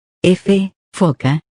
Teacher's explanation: Labio dental. Se produce cuando el labio inferior roza los dientes superiores.